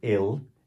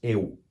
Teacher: normalmente o brasileiro faz o L sozinho soar U. Em vez de dizer el, diz eu.